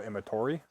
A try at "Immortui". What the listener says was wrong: Immortui. You added an R in the last 3 letters of his last name. You said Imatori. fucked it up. It's Immortui.